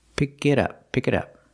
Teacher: we hear the T and it sound like a fast D